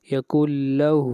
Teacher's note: ہا کو کھینچ کر پڑھیں گے ایک الف کے برابر